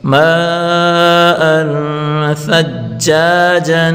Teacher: نون تنوین کے بعد حروف ثا ہے، ثا حروف اخفا کا ہے تو یہاں غنہ کر کے پڑھیں گے اور ثا حروف نرم ہے۔